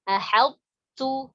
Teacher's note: Jadi bukan ahadtu langsung ketak enggak, tapi ada sisa sifat dari huruf to yaitu tebal. Ahadtu, begitu. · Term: idgham yang naqis